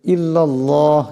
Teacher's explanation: এখানে আল্লাহ নামকে মোটা করিয়া পড়তে হবে